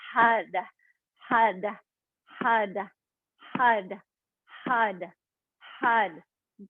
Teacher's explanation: It's H-A-R, but it sounds like H-U-D. So on that D, it's like a soft D, like a rolling R, like in Espanol.